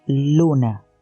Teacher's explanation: la met produce un sonido alveolar lateral aproximado como en la palabra luna